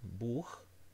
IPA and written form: buːx (Buch)